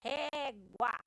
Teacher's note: Só tem duas sílabas e a mais forte é ré, inclusive ela é acentuada. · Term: paroxítona